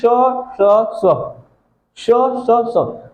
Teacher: उष्म आ रही है, उष्मा आ रही है, रगड़ आ रही है, लेकिन उतना गूंज नहीं आ रहा है दोस्त